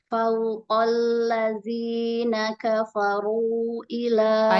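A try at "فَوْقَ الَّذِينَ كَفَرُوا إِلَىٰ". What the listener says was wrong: Panjangin, mad jaiz. Kalau ada bendera tuh pokoknya panjangin aja. Ya, di atas wawu atau ya, kalau ada bendera tuh panjangin aja. Ada lambang mat. Fau monyong, waw monyong lin. Fauqalladzi.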